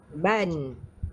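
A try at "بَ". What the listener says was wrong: Yang ini kak, dia tak boleh baca panjang ha. Baban. Ha, baban.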